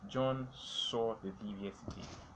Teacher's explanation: He only saw. So the purpose here is to stress saw, to call attention to the word saw